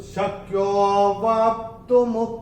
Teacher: और चौथे चरण में ये जो अवग्रह आ रहा है, अवग्रह में विलुप्त अ होता है, तो यो को हम थोड़ा सा खींच के बोलेंगे